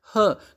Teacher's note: जो है वह ग्लोटल ध्वनि है ह जिसको बोलते हैं ह जब हम ह बोलते हैं तो हमारा ग्लोटल जो है हमारा जो कंठ जो ग्रसनी है वहां से यह बोला जाता है · यह ग्लोटल ध्वनि है यह फ्रीकेटिव में आती है और यह वॉइसलेस है